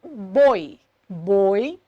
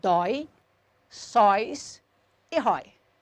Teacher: para contrapor com esses ditongo fechado OS ditongos abertos nas palavras dói sóis herói